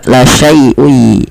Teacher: kita memasukkan tanwinnya pada lafal un ketemu masukkan kepada huruf ya sehingga suara nun sukunnya hilang. Kan awalnya la syaiun ada nun dimatikan ketemu ya langsung ke ya la syaiuy. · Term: idghamunah